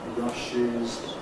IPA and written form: ˈrʌʃɪz (rushes)